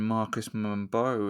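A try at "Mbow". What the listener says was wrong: Apparently it's just pronounced Bo. Apparently the M is silent.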